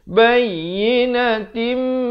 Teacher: ta tanwin di bawah bunyi tin. Tapi bila datang mim, idgham bi gunnah masuk beserta dengung. 2 harakat jadi tim.